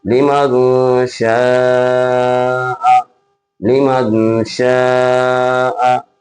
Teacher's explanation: نون ساکن یا تنوین کے بعد شین آئے گا تو شین آنے کی صورت میں بھی اخفا ہوگا